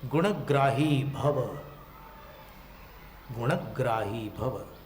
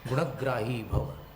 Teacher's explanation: ण को पूरा बोल रहे हैं, और ग्राही में संयुक्त अक्षर है तो स्वराघात भी कर रहे हैं